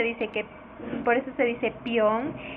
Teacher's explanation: Y en las palabras peón y teoría, según Lisandro Alvarado, ocurre la sinéresis, pero esta sinéresis tiene un efecto en la E. El efecto es que la E se vuelve I antes de A o de O.